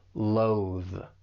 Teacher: For pronunciation, it's just the one syllable, but make sure you're using that voice th at the end.